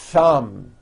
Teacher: notice how long I'm holding the th sound thumb it's not good enough just to put your tongue between